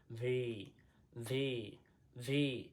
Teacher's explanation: উপরের দাত নিচের ঠোটের সাথে লাগবে